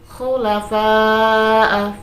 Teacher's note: fa'a itu bacaan mad wajib mutasil sebab mad bertemu dengan hamzah dalam satu kalimat yang panjangnya 2,5 alif atau 5 harokat